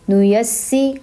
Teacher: سین زیر سی، نو یس سی. سین کو 2 بار پڑھا کیونکہ وہ مشدد ہے